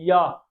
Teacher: या का उच्चारण स्थान तालव्य से होगा। तालव्य का मतलब तालु से होता है।